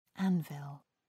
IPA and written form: ˈænvɪl (anvil)